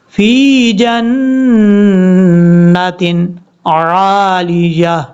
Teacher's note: اس کے بعد ہے فی جنت عالیہ، لام کے بعد جو یا ہے اس یا کو کلیئر کرنا ہے. عالیۃ، جب سٹاپ کریں گے تو تا کو ہا سے بدل دیں گے